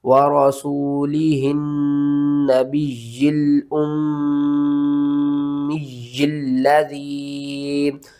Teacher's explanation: یہاں پر آپ نے نون مشدد کے اوپر غنہ کرنا ہے، یا کے اوپر سختی کرنی ہے، یا کو 2 بار پڑھنا ہے · میم کے اوپر غنہ کرنا ہے، میم کو 2 بار پڑھنا ہے، اور یا کے اوپر سختی کرنی ہے اور یا کو 2 بار پڑھنا ہے